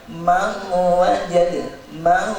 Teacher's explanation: Nun yang mempunyai sifat gunnah, sifat dengung itu tetap tidak boleh hilang. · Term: idgham bi gunnah